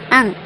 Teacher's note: इसे अनुनासिक कहते हैं। इसे बोलते हुए नाक और मुंह दोनों से ध्वनि निकलती है।